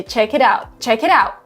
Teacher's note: in the word it is replaced with a D